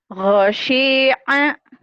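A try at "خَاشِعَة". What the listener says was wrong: Pendek semua. Khosyi'a. Kho, bukan go. Kho, khair. Khair.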